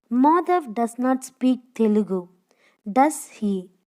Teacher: If the intonation of the tag goes up, it means we are not sure if Madhav speaks Telugu and we want to know if he does. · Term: Raising intonation